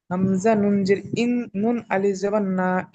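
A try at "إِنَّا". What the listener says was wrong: এখানে জবরটি ছেড়ে গিয়েছে, এখানে জবর লাগিয়ে নেবেন। হামজা নুন জের ইন, নুন আলিফ জবর না। ইন্না।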